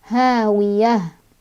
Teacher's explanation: Tak marbutoh kalau berhenti jadi ha besar ya, ha sukun.